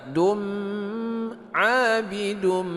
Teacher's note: Mad asli panjang 2 harakat. Dum abidum, idgham bi gunnah berdengung 2 harakat